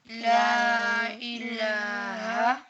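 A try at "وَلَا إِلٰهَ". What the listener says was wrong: کیا پڑھا میں نے؟ واو آپ نے چھوڑ دیا. ولا الہ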